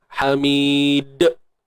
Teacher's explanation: qalqalah ni bukan bunyi dimatikan dengan bunyi hamzah belakang lah